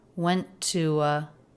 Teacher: So these two words are connected with just a single T sound.